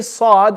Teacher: has a quality known as safir which is a whistling sound so when we say saad if you're not making that whistling